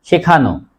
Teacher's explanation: আনু প্রত্যয় যুক্ত শব্দের শেষ অ এর উচ্চারণ ও এর মত হয়